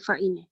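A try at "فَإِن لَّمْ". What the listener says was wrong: Nun dia terus masuk pada lam. Dia masuk tanpa dengung. Dia tak boleh bunyi nun.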